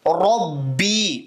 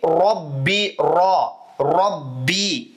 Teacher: அர் அப்படின்னு வாய் முழுவதுமாக வல்லினமா வச்சு ஓதணும்